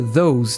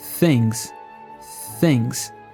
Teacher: aqui temos o som do th com z e com s para fazer o som dos dois usamos o mesmo processo coloca